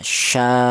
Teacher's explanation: Ini panjangnya yaitu 2 alif setengah ya, sya'a, seperti itu. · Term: mad wajib mutasil